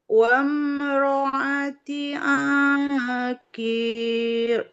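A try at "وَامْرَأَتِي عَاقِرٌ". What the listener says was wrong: qafnya nggak panjang. Qafnya kasroh tidak ada ya-nya. Wamroati akhir.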